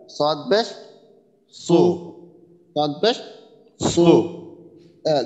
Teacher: জিহ্বার গোড়াটা একটু আর কি উপরের দিকে যদি উঠানো যায় তাহলে আর কি মোটা হয়ে যাবে